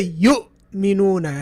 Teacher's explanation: So when you say yu'minuna and you feel that the sound has just come to a stop like that, you know hamza is involved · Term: glottal stop